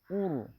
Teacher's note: اس میں آواز کو زیادہ جاری نہیں کریں گے، اس میں صفت توسط ہے